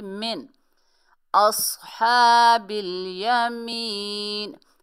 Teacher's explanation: نون ساکن میں اقفا غنہ کچھ بھی نہیں ہوگا، ظاہر کر کے پڑھیں گے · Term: اظہار